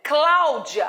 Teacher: Quando eu falo Cláudia, repare que o clá, o timbre é aberto